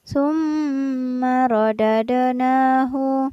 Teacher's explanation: berlaku hukum bacaan ghunnah yakni dibaca mendengung dan ditahan selama dua harokat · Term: gunnah